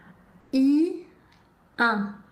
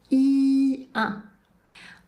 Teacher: la bouche prend la même forme que pour prononcer le son I et ensuite le son devient nasal. I, 1. Et on garde bien la langue à plat dans la bouche.